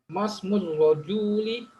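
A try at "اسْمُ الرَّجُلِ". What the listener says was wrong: Ahsan.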